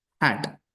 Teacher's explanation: Glottal. Sound produced at the glottis.